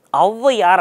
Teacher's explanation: 1.5 மாத்திரையாக ஒலிக்கும். அப்போ ஔகாரம்ன்ற 2 மாத்திரை இருக்கக்கூடிய நெடில் எழுத்தும் முதல்ல வந்துச்சுன்னா 1.5 மாத்திரையாக ஒலிக்குங்க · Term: ஔகார குறுக்கம்